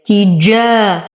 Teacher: تدخل التاء الأولى في الثانية فتصيران واحدة مشددة، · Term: إدغام مثلين